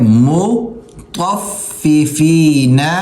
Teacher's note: طا کو فا سے ملائیں گے، طا موٹا کریں گے